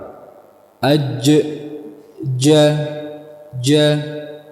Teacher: tapi kesamaannya satu yaitu apa semuanya keluar dari tengah ya Nam Adapun Jim dia makhrajnya rapat Bisa Antum perhatikan makhrajnya dia rapat pertemuan antara bagian tengah lidah kepada langit-langit rapat